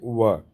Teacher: व ओष्ठ का भी प्रयोग हो रहा है दांत का व तो दंतोष्ठ हो जाएगा